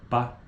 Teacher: Os articuladores produzem uma obstrução completa da passagem da corrente de ar através da boca. O véu palatino está levantado e o ar que vem dos pulmões encaminha-se para a cavidade oral. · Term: oclusiva